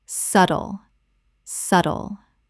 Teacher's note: The B is completely silent. Two syllables only.